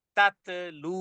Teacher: জিহ্বার আগা সামনের দাঁতের সামনের উপরের দুই দাঁতের গোড়ার সাথে লাগিয়ে দিয়ে খুব টেনে পড়তে হবে আওয়াজকে কঠিন করে